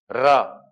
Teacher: र का जब आप उच्चारण करेंगे तो वायु लुढ़कते हुए बाहर निकलती है · ऐसा व्यंजन जिसका उच्चारण करते समय जिह्वा में कंपन हो, जिह्वा कांपे, ऐसे व्यंजन को कहा जाता है प्रकंपित व्यंजन। आप र का उच्चारण करके देखो, आपको जिह्वा, आपकी जिह्वा वाइब्रेट होगी, कंफर्म होगी। · आप र का उच्चारण करके देखो, आपको जिह्वा, आपकी जिह्वा वाइब्रेट होगी, कंफर्म होगी। बिना वाइब्रेशन के आप र का उच्चारण कर ही नहीं सकते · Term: लुंठित